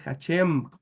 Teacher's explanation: es Hashem, con M al final, no con N